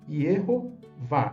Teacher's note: Erro forma uma primeira sílaba, que é uma pretônica, com vogal longa, e está correta, né? A primeira sílaba aberta não é a sílaba mais forte e tem uma vogal longa. Dentro das regras de fonética do hebraico, essa formação silábica está perfeita, está correta. · vá é uma sílaba tônica aberta com vogal longa e está correta também dentro das regras da fonética da língua hebraica.